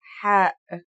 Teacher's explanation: The closest English counterpart to the sound is H. The only difference is that it comes from a point deeper down in your throat